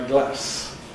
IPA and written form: glæs (glass)